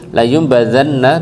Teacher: dibaca layum pakai m atau mim ya, diganti yang tadinya nun jadinya mim. Layum badana tahan nunnya sebentar.